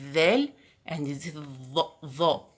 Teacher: We use the upper teeth with the tip of the tongue in pronouncing ظا and ذال.